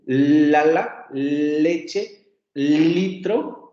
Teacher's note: la L es un sonido alveolar porque lo articulamos ahí